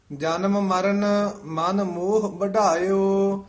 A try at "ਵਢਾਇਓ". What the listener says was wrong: ਵਢਾਇਓ ਢੱਡਾ ਜਿਹੜਾ ਨਾ ਭਾਰਾ ਬੋਲਣਾ ਵਢਾਇਓ ਨਹੀਂ ਕਹਿਣਾ ਵਢਾਇਓ